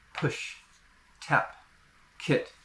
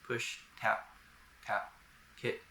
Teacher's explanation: I can also say the P, T, or K with a strong breath of air, what we call aspiration, like the P in push.